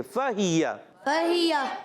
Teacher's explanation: और या का मखरज भी याद रखें कि या जो अदा होता है वस्ते ज़बान वस्ते तालु से